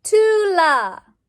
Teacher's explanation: the stressed syllable is tu